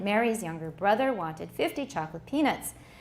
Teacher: the first syllables of younger, wanted, and chocolate are pronounced without stresses, but with their full vowel qualities. 那 个 vowel 不 受 影 响， 就 是 stress 拿 掉 了， 因 为 太 多 了。